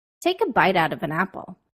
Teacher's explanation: I pushed forward the consonant sounds at the end of each word and placed them at the beginning of the words that followed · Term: connected speech